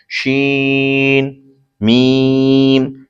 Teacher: और मीम दोनों होठों के खुश्क हिस्से से अदा होता है। शीन मीम, शीन जबान के दरमियान तालु के दरमियान से अदा होता है और मीम दोनों होठों के खुश्क हिस्से से अदा होता है